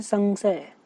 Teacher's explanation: आपको पता चलेगा कि नाक पे प्रेशर पड़ रहा है, ठीक है ना, नाक से आवाज़ निकल रही है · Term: अनुस्वार